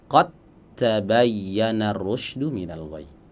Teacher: dal dan ta makhrajnya sama, ujung lidah bertemu dengan pangkal gigi seri bagian atas. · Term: idgham mutajanisain